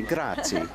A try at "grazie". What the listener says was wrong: Grazie. Grazie. You must pronounce the E. Eh. In Spain, grazie. In Italy, grazie. Grazie. Grazie.